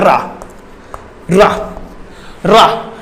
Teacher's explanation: रा का उच्चारण स्थान होता है मूर्धा